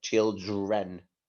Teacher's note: it's that d and the r together that sometimes sound like a j